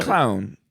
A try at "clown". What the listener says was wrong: Okay, yeah, it's there's just a slight space between the C and the L, you're adding a vowel. Clown school.